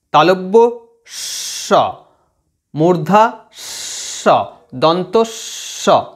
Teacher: এই যে শীষ দেওয়ার মতো যে আওয়াজটা আসছে, এই জন্য এই 3টে ধ্বনিকে আমরা শীষ ধ্বনি বলতে পারি